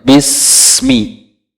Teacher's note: Huruf sin bukan huruf qalqalah. Jadi mengalir, Pak. Jangan dipantulkan.